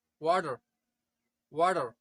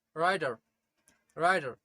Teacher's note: अगर अब मैं इन दोनों वर्ड्स को अमेरिकन इंग्लिश में प्रोनाउंस करूं, so the first one is वाटर, वाटर, and the second one is राइटर, राइटर. जब लेटर टी दो वर्ड के बीच में आता है तो अमेरिकन वहां पर letter टी letter D pronounce करता